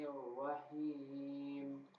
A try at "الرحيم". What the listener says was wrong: رحیم ہا ہا کے کیس میں، یہ رحیم کے کیس میں آپ گیو اپ کر جاتے ہو. پہلے ہا صحیح آتے ہیں، نیکسٹ جو حیم ہوتا ہے اس کے اندر آپ تھوڑا سا لینینٹ ہو جاتے ہو، تو گیو اپ نہیں کرنا. رحیم.